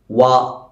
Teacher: maximum മുന്നിലേക്ക് കൂർപ്പിച്ചുകൊണ്ട് വ എന്ന് ഉച്ചരിക്കണം